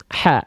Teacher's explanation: Hak yang dia nafasnya lebih berbisik lembut. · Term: hak kecil